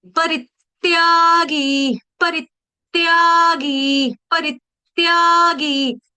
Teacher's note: त्या दीर्घ, गी दीर्घ, री ह्रस्व, री के ऊपर आघात, आधे त का, हलंत त का